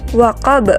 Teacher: Dan pantulannya harus diberatkan karena ia qalqalah kubra